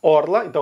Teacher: o Rio Grande do Sul vai usar o r enrolado nas palavras Orla e Mar